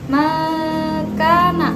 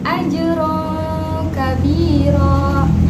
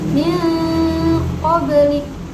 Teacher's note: paduan nun bersukun atau tanwin ketika menghadapi huruf qaf atau kaf akan menghasilkan bunyi eng. Contohnya seperti makana, yaitu nun mati bertemu dengan kaf. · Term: ikhfa ab'ad